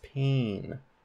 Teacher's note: in the word pain it's saying that look that's nasalized that a is nasalized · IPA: pe͠ɪn